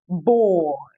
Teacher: you would have to Glide from the first sound to the second